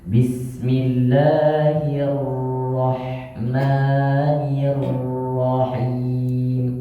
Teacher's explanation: Roh tebal itu getarannya tidak banyak, cuman sekali getaran. Takrir. Bukan hirrahmanirrahim, itu tipis.